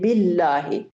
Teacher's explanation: ما قبل کے نیچے زیر آئی ہے تو اب ہم اللہ کو پر نہیں پڑھیں گے، موٹا کر کے نہیں پڑھیں گے بلکہ باریک پڑھیں گے ، اور وہاں باللہ کہہ دیں تو یہ غلط ہے۔ اس